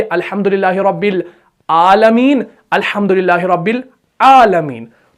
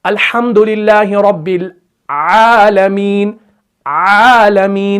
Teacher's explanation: बस एक चीज जहन में रखो, आइन के वक्त क्या होगा कि आइन के वक्त स्टार्टिंग में आवाज जो है वो थोड़ी सी स्क्वीज होगी, थोड़ा सा उसके अंदर निचोड़ पैदा होगा, तो फिर वो आइन जो है अदा हो जाएगा।